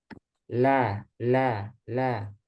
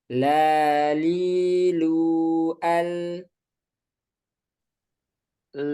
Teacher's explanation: kalau lam itu kan ujung lidah menempel pada gigi mulai dari gigi taring sampai gigi seri kanan kiri. Nah, itu makanya dia udaranya lewat samping ke sini. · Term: inhiraf